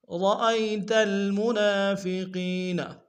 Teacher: را کو موٹا ادا کریں گے. را کے اوپر تشدید زور دیں گے.